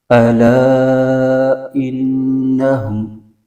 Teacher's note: پر زبر ہے، اس کو بغیر کھینچے پڑھیں گے، اور آگے الف سے پہلے زبر ہے تو الف مدہ ہوگا، اس کو ایک الف کھینچیں گے ، اور حروف مدہ کے بعد حمزہ دوسرے کلمے میں آ